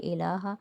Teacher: لام کے اوپر کھڑا زبر ہے، ایک الف کی مقدار کھینچیں گے۔ الا، الف مدہ بن رہا ہے، ایک الف کی مقدار کھینچیں گے۔